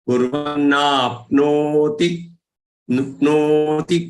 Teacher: That no is long, ti has to be short.